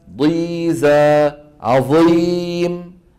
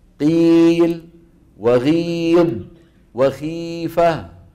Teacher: وكذلك ضيزة عظيم أشد تفخيما من قيل وغيض وخيفة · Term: الاستعلاء المطبق